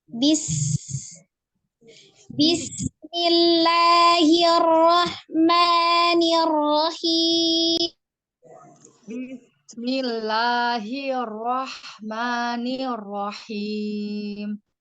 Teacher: di bacaan bismillah itu yang mengalir adalah sinnya, bukan baknya ya. Kalau baknya siddah.